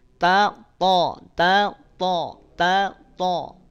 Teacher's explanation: dua-duanya ada pada makhraj yang sama di mana ujung lidah nempel dengan pangkal gigi seri atas